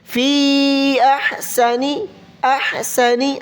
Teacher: یہاں پر مد کریں، کھینچ کر پڑھیں، مد ہے فا پر